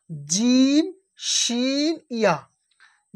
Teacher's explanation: জিবের মাঝখান এবং তার বরাবর উপরের তালু, উপরের তালু, জিবের মাঝখান এবং তার বরাবর উপরের তালুর সাথে লাগিয়ে উচ্চারণ হয়